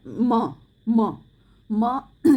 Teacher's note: उच्चारण करते हैं तो उसमें हमें म के साथ अ का भी स्वर सुनाई देता है